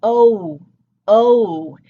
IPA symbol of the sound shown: oʊ